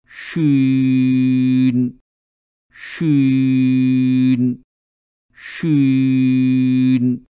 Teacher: شین کی ادائیگی میں زبان کی جڑ کو تالو کی طرف نہ اٹھنے دیجیے، ورنہ شین کی آواز موٹی ہو جائے گی